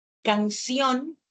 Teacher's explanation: yo hago un mayor esfuerzo o una entonación al pronunciar la última sílaba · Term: acento